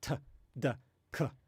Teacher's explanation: when you say those sounds, you can only say them quickly, like instantly, because you actually block the outgoing air. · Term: stops